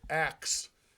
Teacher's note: the airflow comes from the back to the front. The k is in the back, the s is in the front.